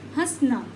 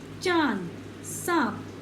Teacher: इसका उच्चारण मुख और नाक से किया जाता है। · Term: चंद्र बिंदु